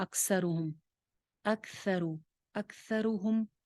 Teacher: سا وہی مخرج ہے جو ذال کا تھا، یعنی اوپر والے دو دانتوں کا کنارہ، تو اس کو سین کی طرح نہیں پڑھنا